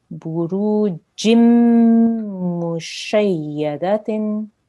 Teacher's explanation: So it's a single stroke and we join this letter to the mim. We don't make a noon sound. We'll have to make a mim sound.